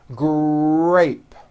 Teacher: notice in the word grape the r sound is stronger and you even hear it more than the G sound